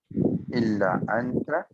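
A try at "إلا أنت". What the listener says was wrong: ইল্লা আতা, নাকের ভিতর দিয়ে উচ্চারণ করতে হবে। নুন সাকিনের পর ইকফা হরফটা আছে।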